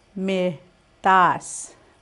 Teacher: T is non-aspirated or in between sound of T and D.